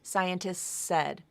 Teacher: so you can just extend that s sound and drop the T if you want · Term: rule of three